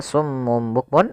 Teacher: Kita balikkan suara nunnya menjadi suara mim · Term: iqlab